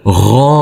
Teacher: huruf ghoain kita baca dengan panjang dua harakat karena di atasnya ada huruf alif kecil yang berdiri tegak lurus